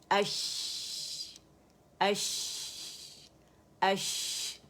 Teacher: شاورنگ sound, شین کا شور, تفشی سنائی دے رہی ہے آپ لوگ کو